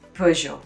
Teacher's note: more of a soft je sound and then the t is a silent one you know so it makes a zhou sound at the end